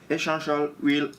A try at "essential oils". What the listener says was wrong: Essential oils. The S.